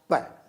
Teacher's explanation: आपने दोनों ओंठों को मिलाया और फिर झटके से श्वास को छोड़ा और आपने ध्वनि का उच्चारण किया प।